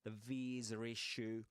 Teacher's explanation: He does pronounce small r sound in between visa and issue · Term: intrusive R